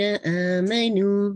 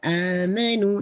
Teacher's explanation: یہ آمنو یہ آپ کا مد البدل ہے، حمزہ ساتھ ساتھ آ رہا ہے